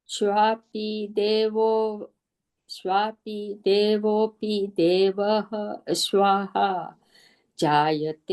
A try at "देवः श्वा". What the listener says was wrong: स्वाहा नहीं, फिर श्वा, विसर्ग नहीं, श्वा। स्वापि देवोपि देव श्वा।